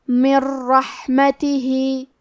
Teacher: کلمت رحمتہ، را حروف الادغام بغیر غنہ میں سے ہے تو ہمیں نون کو را میں ملا کے بغیر غنہ سے لیکن تشدید کے ساتھ یہ حکم کو ادا کرنا ہے